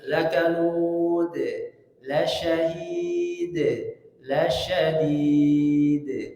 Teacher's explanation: di antara sifat huruf dal dia memantul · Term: qalqalah